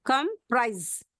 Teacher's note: comprise or compose, comprise with stress on the second syllable. · We have to give stress on the second syllable.